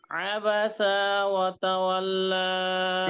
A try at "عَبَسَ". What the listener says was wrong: এই যে আপনার কিন্তু সিনে টান হয়ে আপনার সিনে টান হয়ে গেছে। আবাসা ওয়া তাওয়াল্লা। আপনারটা হচ্ছে আবাসা ওয়া, এই টান দেওয়াই যাবে না আর কি, যেটা আছে হরকত।